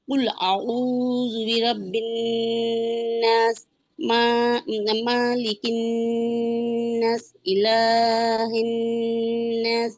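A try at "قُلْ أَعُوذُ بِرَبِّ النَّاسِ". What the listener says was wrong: টান তো হচ্ছে না, সবগুলো লাস্টে টান আছে, টান হচ্ছে না তো। বিরাব্বিন নাস, তিন আলিফ টান।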